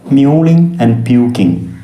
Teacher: the repetition of the vowel sound u, long u sound